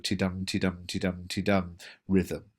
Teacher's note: an unstressed syllable followed by a stressed syllable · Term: iambic pentameter